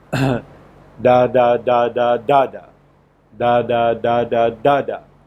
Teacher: Now it so happens that of all these, the last syllable is the one which contains the primary stress. So the system will read like da da da da da da, da da da da da da.